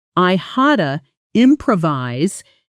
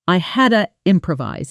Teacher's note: Had to often blends into something closer to hadada. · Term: reduction